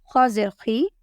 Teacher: Kha will come out from the upper part of the throat and it is a thick letter.